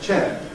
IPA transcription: ʧeː